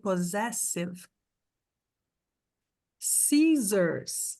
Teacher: O segundo tem som de S. Mas o primeiro joguinho aqui, o primeiro parzinho de S tem som de Z.